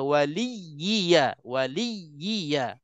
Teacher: Tamkin dalam makna kita kena tasydid, kena tekan supaya betul-betul kita bezakan ya yang ada sabdu tu, supaya kita tekan menyebut ya mati yang ada dalam huruf ya. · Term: bacaan tamkin